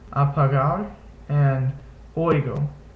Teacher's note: It's pronounced like the G in sugar, like a sort of a less glottalized G when it's in between vowels. So apagar, and oigo.